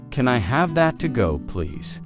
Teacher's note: When you say to go, your voice should rise slightly. It makes the question sound polite and clear.